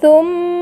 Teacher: میم مشددہ اگر حالت وقف میں آئے تب بھی غنے کے ساتھ ہی پڑھی جاتی ہے، جیسے ثم۔ آپ نے دیکھا میم مشددہ حالت وقف میں آئی اور غنے کے ساتھ پڑھی گئی۔